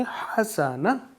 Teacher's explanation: ہا کو واضح انداز میں پڑھیں گے، ہا کو حلق سے ادا کریں گے